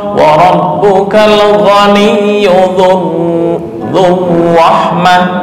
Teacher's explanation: Gunnah dicampur ikhfa ditambah takrir, jadi lebih lama.